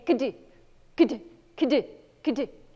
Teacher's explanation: I clearly had a K sound and a little tiny bit of an N sound and a D sound in there. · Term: all the consonants